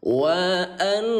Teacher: Baca tahan dulu 2 ketukan.